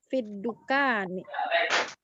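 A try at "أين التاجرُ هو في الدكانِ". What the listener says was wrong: Ulangi sekali lagi, Om. Ada yang terlewat. Ada kata yang terlewat. Aina tajiru huwa fiddukani. Yang penting yang tidak ada huruf jar sebelumnya tetap dhammah, sedangkan yang diawali huruf jar jadi kasrah huruf terakhir.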